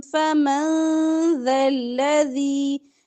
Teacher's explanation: نون ساکن کے بعد ذال ہے تو اخفا ہوگا